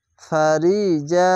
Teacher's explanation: জবরের পাশে খালি আলিফ এক আলিফ এখানে টেনে পড়বেন